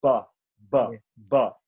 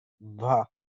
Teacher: Ba will be pronounced only with the lips. Ba, ba, ba.